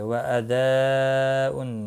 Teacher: مد متصل ہے، 4 الف کے برابر کھینچ کر پڑھیں گے